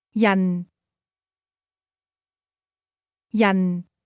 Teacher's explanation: This word is pronounced with a falling tone.